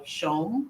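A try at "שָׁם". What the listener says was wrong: Shom, good.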